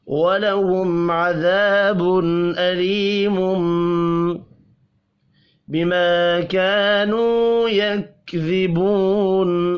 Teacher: کانو یہ بھی الف اور واو مدہ ہے، دونوں ایک ایک الف کے برابر کھینچ کر پڑھے جائیں گے۔